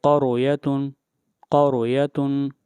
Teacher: اگلی مثال دیکھیے، اس مثال کے اندر بھی را ساکن ہے اور را سے پہلے جو حرف ہے اس کے اوپر فتحہ یعنی زبر آئی ہوئی ہے اس لیے اس را کو بھی موٹا پڑھیں گے